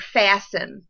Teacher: the word fasten, you cannot hear the T sound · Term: silent T